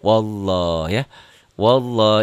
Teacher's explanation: lafad Allahnya dibaca tebal karena sebelumnya baris di atas